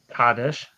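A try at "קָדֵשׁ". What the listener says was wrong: You don't change the placement of accents in pause. The stress doesn't change. Kadesh is not a word. It's not the name. The name is Kadesh. See, the word Kodesh is a different word.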